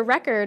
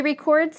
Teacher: We stress the first syllable in the nouns and the second syllable in the verbs.